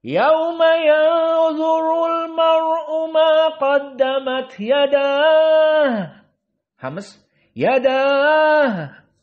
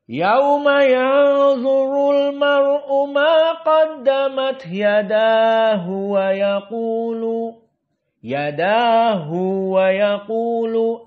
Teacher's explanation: Maka di sini ada mad dikarenakan madhab dari Ibnu Katsir, mad silah masuk